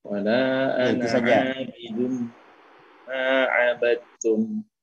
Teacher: Tanwinnya bertemu dengan mim di idgham bi gunnah, dimasukkan dengan mendengung.